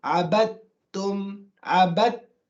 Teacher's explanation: The interaction between the two letters which have come together is such that the first letter is completely gone and merged into the second letter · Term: complete merge